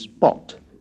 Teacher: we must try to pronounce pi as in the French peep, or English spot, not with the strong aspiration.